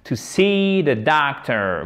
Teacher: c'est pas un A long. Attention, c'est pas docteur. Non, c'est entre le A et le O, mais phonétiquement, en fait, on l'écrit comme ceci. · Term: voyelle longue